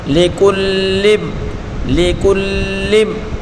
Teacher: وصاحبتہ وبنیہ وصاحبتہ وبنیہ لکل امرئ، لام کے نیچے پڑھی حرکت بغیر کھینچے پڑھیں گے، کاف کے اوپر بھی پڑھی حرکت بغیر کھینچے پڑھیں گے، کاف کو لام کے ساتھ ملا کر پڑھیں گے اور لام کو میم کے ساتھ ملا کر پڑھیں گے